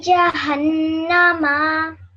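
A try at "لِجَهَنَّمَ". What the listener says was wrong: Your meme is still a bit long, so repeat after me. It should be ma, okay? Li jahannama.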